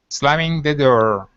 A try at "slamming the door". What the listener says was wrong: Now, watch your D sounds just a little bit, okay? Because you're still pronouncing that Slavic D, saying door, door. Instead of the, it's d. Move your tongue back off the back of your teeth. So move it back just a bit. Door.